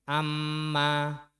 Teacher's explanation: Amma itu untuk mim tasdid maupun nun tasdid harus ada dengung atau gunnahnya. Dan untuk dengungnya cukup 2 harokat saja.